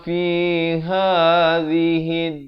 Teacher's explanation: Ha makhrajnya di pangkal kerongkong, zi di hujung lidah.